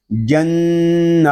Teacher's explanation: جیم نون زبر جن، نون میں شدد ہے، اس کو غننے کے ساتھ پڑھیں گے